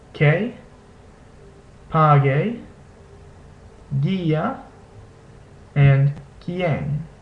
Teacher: In the configuration ku ue or he ue, the U is not pronounced, and only the second vowel is pronounced.